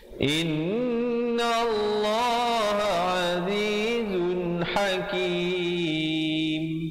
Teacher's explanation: Yang betulnya innallaha azizun, izhar halqi di situ. Bunyi saja zun terus masuk hakim.